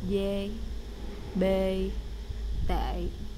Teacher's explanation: it's a monotone e like in net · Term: e with a hat